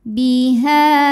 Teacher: adalah Mad Thobi'i dahohiri sebab ada Alif yang sebelumnya berharakat fathah cara bacanya adalah kita panjangkan Hnya dua harakat